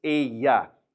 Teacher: And there's a good reminder from last episode about that double L. We make it a y sound instead of a l sound.